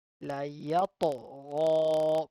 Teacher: So ta is a qalqala letter. We need to bounce back here.